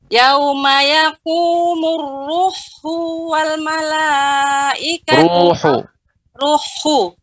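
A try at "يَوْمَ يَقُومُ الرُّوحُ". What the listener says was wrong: Ru-nya dipanjangkan dulu, Ibu. Yauma yaqumur ruhu.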